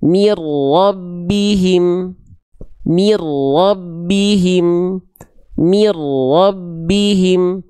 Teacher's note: Lalu tadi di sini ada nun sukun ketemu sama huruf ro teman-teman sekalian ya. Maka di sini n-nya dimasukkan ke huruf ro dileburkan, enggak perlu ditahan. Namanya idgum bilagunah.